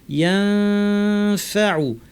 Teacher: দাঁতকে ঠোঁটের উপর এনে ফা বলার জন্য রেডি করে নাক থেকে গুন্না করবো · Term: ইখফা